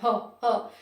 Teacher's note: ह जब हम बोलते हैं तो ये कंठ के भीतर से आवाज आती है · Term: हल्का हा